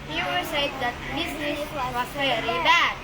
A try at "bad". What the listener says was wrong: Ya, bad-nya panjang. Kalau bad pendek itu tempat tidur. BED ini bad.